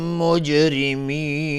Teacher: جیم اینجا قلقله میخواد و را ترقیق است چون کسره داره. مجرمین مد عارض سکون به مقدار 2 یا 4 یا 6 حرکت میتونیم مد بدیم.